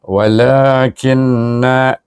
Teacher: na pula dibaca dengan mad asli dua harakat kerana ada alif